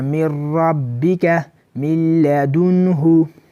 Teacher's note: خو دلته غنه به پکې نه کیږي، صرف به مونږ ادغام کوو